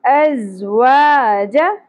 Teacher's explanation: جیم کے اوپر زبر زیادہ نہیں کھینچنا